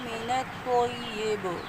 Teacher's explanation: با حروف قلقلہ میں سے آواز پلٹ جائے گی